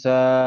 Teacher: আলিফ মাদ্দাকে এক আলিফ পরিমাণ টান দিয়ে পড়তে হবে, বলুন। আলিফের ডান দিকে জবর এসছে, এক আলিফ টান দিয়ে পড়তে হবে, আলিফ মাদ্দা।